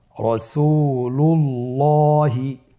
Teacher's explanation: আল্লাহ শব্দের দ্বিতীয় লামের আগেই এখানে একটি পেশ রয়েছে, এই জন্যে দ্বিতীয় লামটিকে পোর করে পড়তে হবে